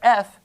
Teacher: And if you say, you pronounce the letter F, you don't feel any vibration here